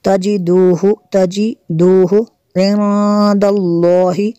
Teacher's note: نون ساکن کے بعد دال ہے حروف اخفا میں سے، یہاں پہ بھی غنہ کریں گے